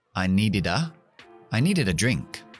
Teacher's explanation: Me llevo la D a la A.